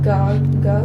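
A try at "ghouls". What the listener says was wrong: said it like God.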